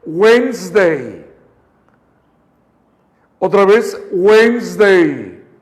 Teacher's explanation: Date cuenta que la D y la E de medio, chequen esto, lo voy a marcar con rojo. Esta D y esta E no la pronunciamos. Entonces suena Wednesday.